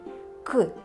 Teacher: вимовляємо його з перешкодою нам наче Щось заважає його вимовити к і глухо вимовляємо це глухий приголосний